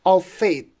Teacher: Of would be unstressed and faith would be a stressed one.